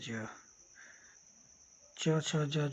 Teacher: यह सब स्पर्श संघर्षी व्यंजन है